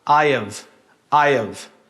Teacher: Então a primeira coisa que a gente vai fazer é desaparecer com esse som de H. I have vai virar I have.